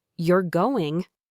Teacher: with a clear upward inflection at the end, it signals a question, perhaps one asking for confirmation or expressing surprise.